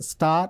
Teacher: final R is not pronounced that's why I put it in the brackets okay and high